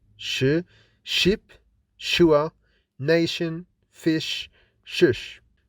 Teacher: Sh is unvoiced and fortis.